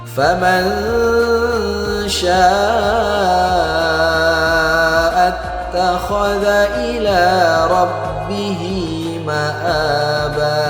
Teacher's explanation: nun sukun berjumpa dengan huruf sya, maka hukumnya ikhfa. Cara bacanya kita samarkan dan kita dengungkan dua harokat.